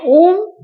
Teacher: जिन स्वरों के उच्चारण में ह्रस्व स्वर से तिगुना यानी कि तीन मात्रा का समय लगता है। तिगुना समय लगता है उसे प्लुत स्वर कहा जाता है।